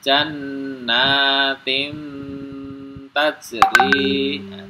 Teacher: di sini ada tanwin ketemu dengan Ta Maka cara bacanya Ya tanwinnya ini disamarkan langsung masuk huruf ta